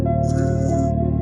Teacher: When I say I can't feel any vibration here, that is unvoiced sound. And when I say z, I can feel some vibrations here, z, that is a voiced sound.